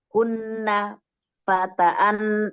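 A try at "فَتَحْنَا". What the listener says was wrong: Haknya disukun. Haknya disukun.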